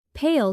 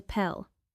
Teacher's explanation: Pale carries a long a that should not slide into pel